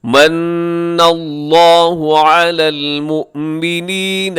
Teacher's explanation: لفظ اللہ پر پڑھیں گے، موٹا پڑھیں گے، اس سے پہلے زبر کی وجہ سے۔